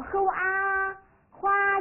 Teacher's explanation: 介母非常快速，对吧？呵啊花，哎，韵母的音非常的长，声音很洪亮